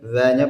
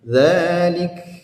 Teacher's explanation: dzanya panjang 2 harakat karena ada tanda panjangnya ya. Mad tabi'i.